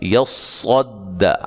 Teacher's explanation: صاد کو جب ادا کرنا ہے موٹی سیٹی کے ساتھ